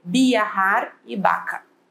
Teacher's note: E ela vai ter o som de B. Ela não tem o som de V, ela tem o som de B.